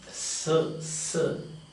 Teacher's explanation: An alveolar fricative or sibilant.